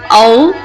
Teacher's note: ہونٹوں سے ادا ہونے والا آخری حرف واو ہے۔ واو کو ادا کرتے وقت دونوں ہونٹوں کو آگے کی طرف گول کیا جاتا ہے، لیکن ہونٹ آپس میں پورے نہیں ملتے، جیسے حمزہ واو زبر او۔